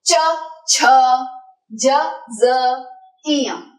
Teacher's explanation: इन पांचों का उच्चारण स्थान तालुहु यानी कि पैलेटल एरिया